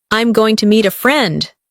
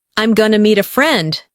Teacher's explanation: Notice how going to becomes gonna.